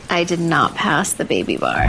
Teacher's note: I got the best vocal fry ever.